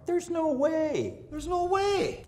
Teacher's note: southern Irish accents when they get really expressive tend to have a very high fall that's the pitch contour